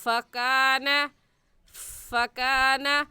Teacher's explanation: ऊपर वाले दांतों की नोक नीचे वाले होंठ की अंदरूनी तरी को लगाने से फ़ा निकलता है